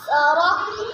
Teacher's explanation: قاف کو وقف میں قلقلہ کر کے پڑھیں گے۔